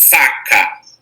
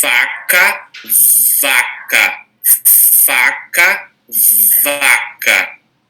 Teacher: pronunciar exatamente igualzinho a única diferença é que agora o meu as minhas cordas vocais elas vão vibrar